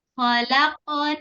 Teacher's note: Nah itu ada Q yang sukun jadi harus ada qalqalahnya ya khaq syidah dulu baru Qalqalah khq dulu baru ke O ya